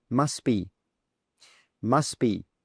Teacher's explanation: in fast spoken English we drop that t sound.